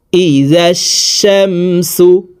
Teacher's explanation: তাহলে অর্থের পরিবর্তন হয়ে যাবে লেখাটি শুদ্ধভাবে হবে না এ কারণে পড়ার সময় আলিফ লাম উচ্চারণ হবে না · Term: আলিফ লাম বাদ পড়ে